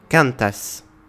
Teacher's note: avec l'accentuation sur l'avant-dernière syllabe